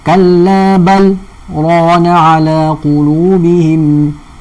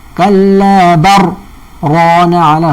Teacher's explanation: Hanya dibaca dengan saktah dengan izhar sahaja. Walaupun pertemuan lam ra kita anggap sebagai pertemuan mutaqaribain yang wajib baca idgham, tapi hal ni terkeluar.